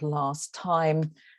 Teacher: So, for example, if I have a phrase like last time, it's very unlikely that you're going to hear a speaker with my accent, certainly, but many other accents produce that T at the end of the word there. So we end up with something more like last time, where we have elided the T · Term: elision